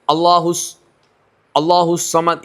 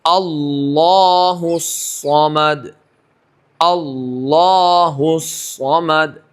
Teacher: لام کے اوپر تشدید ہے، لام پڑھنے میں تاخیر ہونی چاہیے. اللہ الصمد یہ نہیں چلے گا، اللہ تشدید ادا نہیں ہوئی.